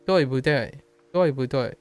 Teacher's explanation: That's fourth tone, neutral, fourth tone.